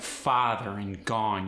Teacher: When you say words like father and gone, you really emphasize the ah in the middle.